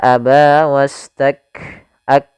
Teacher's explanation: Syiddahnya harus tampakkan dulu baru hamznya, tidak bisa bersamaan. Maka aba wastak ak, mat itu apa namanya, syiddahnya dulu, tertahannya suara baru nafas, ya.